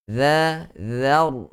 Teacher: Za, zar, begitu. Za nipis, diberikan haknya. Ra tebal, juga diberikan haknya masing-masing.